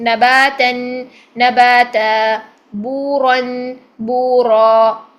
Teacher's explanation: زبر تنوین ہوگی تو ہم الف مدہ میں چینج کریں گے، لیکن پیش تنوین یا زیر تنوین ہوگی تو ساکن کر دیں گے، زبر زیر پیش کو بھی ساکن ہی کریں گے، ٹھیک ہے۔